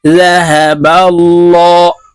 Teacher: হাহা বা লাম জবর বাল জাহাবাল লাম খারা জবর ল আল্লাহ আল্লাহ শব্দের আগের হরফে জবর আছে তাই এই লামকে ল অর্থাৎ মোটা করে পড়তে হবে